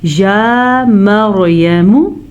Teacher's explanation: یا کے اوپر زبر ہے تو یہ یا لمبی نہیں کی جائے گی، نہ تو میم لمبا کیا جائے گا